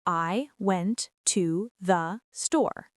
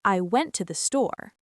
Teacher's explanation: With stress on went and store, while I, to the are quick and reduced, >> so some words almost disappear.